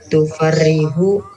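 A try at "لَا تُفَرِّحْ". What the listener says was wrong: Enggak, ini sukun. Farrih la tufarrih la tufarrih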